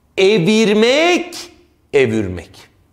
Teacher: yuvarlaklaşma vardır dudak ünsüzleri etkisiyle V M gibi